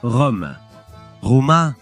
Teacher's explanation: le R initial est doux en italien fort en espagnol.